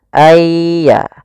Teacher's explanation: masukkan nunnya kepada ya Sehingga nunnya hilang tinggal ynya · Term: Idgham